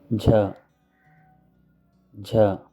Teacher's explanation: this is the aspirated ja sound